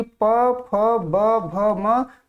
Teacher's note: प वर्ग के ध्वनियों का उच्चारण स्थान क्या है आपसे पूछा गया है, तो ओष्ठ है